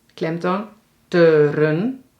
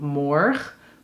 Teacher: de klemtoon ligt op morg = morg-un